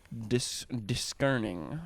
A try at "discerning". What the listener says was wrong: discerning? You don't pronounce the C. No, that's just English.